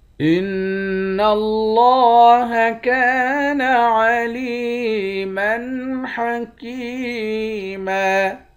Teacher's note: نون مشدد پر غنہ کریں گے، لفظ اللہ کے لام کے اوپر کھڑا زبر ہے، لفظ اللہ کے لام کو ایک الف کے مقدار کھینچ کر پڑھیں گے، لفظ اللہ کے لام کو موٹا بھی پڑھیں گے۔ کاف کے بعد الف ہے، ایک الف کے مقدار کھینچیں گے، لام کے بعد یا ہے، اس کو بھی ایک الف کے مقدار کھینچیں گے، کاف کے بعد یا ہے، اس کو بھی ایک الف کے مقدار کھینچیں گے، دونوں یا مدہ ہیں، یعنی حروف مدہ ہیں۔